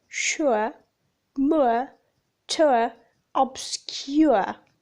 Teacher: Characteristics: the glide begins in a position for U, moving forwards and down towards A. The lips are loosely rounded, becoming neutrally spread.